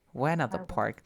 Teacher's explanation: When we have the T after an N and a vowel sound, because this is the schwa, you drop the T sound